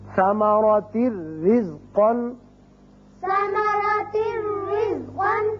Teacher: تنوین کی وجہ سے ایک زیر پڑی جائے گی اور صرف را ہوگا، یہاں نون کی آواز نہیں آئے گی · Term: ادغام بغیر غنہ